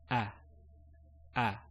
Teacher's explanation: when we say the sound the a sound um you'll notice your mouth is open wide